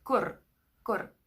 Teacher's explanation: So you get to roll your R's a little bit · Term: roll their R's